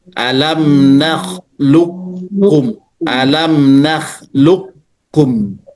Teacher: Langsung masuk qafnya itu ke kaf. Nggak dikol-kolahkan lagi.